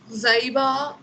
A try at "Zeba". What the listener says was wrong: Ma'am, I silent.